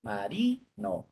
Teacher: La sílaba tónica de marino es ri